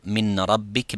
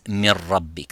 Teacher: the noon sakina completely disappears, as well as its quality of the ghunna. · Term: complete idgham